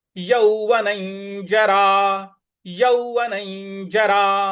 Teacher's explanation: न के ऊपर जो अनुस्वार है उसका उच्चारण हमें ञ की तरह ले आना है।